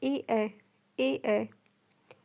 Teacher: जो कंठ से भी बोला जाता है और तालु भी स्पर्श करता है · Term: कंठ तालव्य